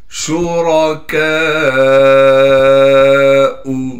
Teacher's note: کاف کے بعد الف مدہ ہونے کی وجہ سے کاف کو ایک الف کی مقدار کھینچنا تھا لیکن کاف پر بڑا مد آنے کی وجہ سے اب کاف کو 5 الف کی مقدار کھینچیں گے.